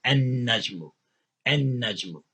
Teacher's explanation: Because noon is a sun letter, you don't pronounce the L or the lam. You double the sound of noon